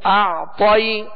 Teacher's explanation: کھینچنے کے بعد اعطی، تو عین جو ہے اس پر جزم ہے، عین ساکن ہے، لہذا اس کا سکون کامل ادا کریں گے. اعطی، طا کو پر پڑھیں گے اس لیے کہ حروف مستعلیہ میں سے ہے. آگے یائے لین کا قاعدہ ہے، نرمی کے ساتھ معروف طریقے سے ادا کریں گے.